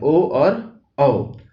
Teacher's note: ओ और औ, ये जो है ये कंठ और ओठ को मिला के बोले जाते हैं, इसीलिए कंठोष्ठ हो गया ये।